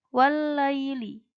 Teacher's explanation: Wallaili, seperti yang ayat pertama tadi, jadi alif lamnya tidak dibaca. Karena alif lam bertemu dengan lam, jadi lamnya hanya dibaca satu. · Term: idgham syamsiyah